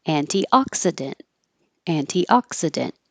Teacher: put that little Mark by the K to remind you that you don't release the K just hold the tongue in the K position